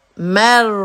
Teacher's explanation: را پہ آواز جاری رہے گی, جھٹکا نہیں ہونا چاہیے